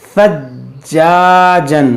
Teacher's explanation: یہاں پر دیکھیے جیم حروف قلقلہ ہے اور مشدد ہے، تو اس کو ایک بار فا سے ملائیں گے اور اسے خوب جماؤ کے ساتھ پڑھیں گے، ثجاجن. اور یہ الف مدہ ہے، اس کو کھینچیں گے، ثجاجن.